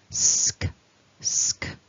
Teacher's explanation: neither of these consonants requires vibration in the throat that's really important no voicing so s to k becomes sk okay so focus on that · So we've got that s, and then we release a bit to make that k, which is not a voiced sound. So neither of these consonants requires vibration in the throat. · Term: sk cluster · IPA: /sk/